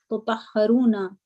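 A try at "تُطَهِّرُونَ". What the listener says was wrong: Tutahhiruna. Haza kasra.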